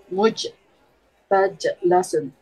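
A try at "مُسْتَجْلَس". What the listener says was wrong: Asinnya mana? Mustajlasun.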